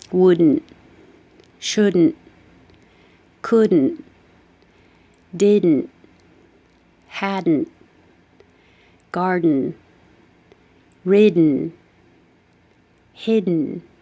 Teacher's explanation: So wooden and wouldn't are going to sound the same because you don't pronounce the final T in wouldn't, shouldn't, couldn't, didn't, hadn't. You don't say the final T, so you just hold it there.